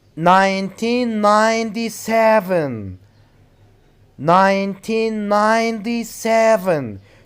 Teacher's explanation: last syllable for example look at example number 1 1997 1997 you have to put the stress on 7 look at example number 2 it's 11:45 it's 11:45 you have